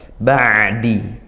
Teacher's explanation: dan dia makhraj ain dari tengah tenggorokan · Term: ain sukun